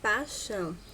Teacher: na palavra paixão o falante da primeira entrevista analisada realizou apagamento da semivogal · o falante realizou o apagamento do I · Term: monotongação